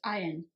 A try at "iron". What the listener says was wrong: You don't need to pronounce the R. Iron. No, well, they sound the same.